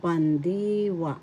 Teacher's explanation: First syllable pan, second syllable di, third syllable wa. The accent is in the second syllable, pandiwa.